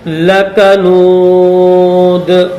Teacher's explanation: جب وقف کریں گے تو اس دال کو بھی ظاہر کر کے پڑھیں گے۔ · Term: حروف قلقلہ